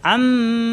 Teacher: মিমে আছে জবর মা এই মা কোন টান নাই